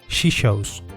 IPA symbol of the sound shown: ʃa